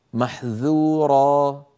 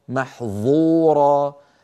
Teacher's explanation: الذال والظاء من المخرج نفسه. الفرق بينهما أن الذال منفتحة